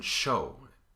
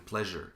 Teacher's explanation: The next place is just a little bit behind that, maybe a quarter of an inch or a half centimeter. If you move your tongue just a little bit back, instead of getting S, you get sh as in show, or j as in pleasure.